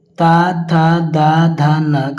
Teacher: जो ता वर्ग है इसका उच्चारण करते समय में दंत का प्रयोग करते हैं।